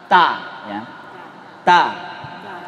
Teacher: Makhrajnya ujung lisan dengan gusi atas.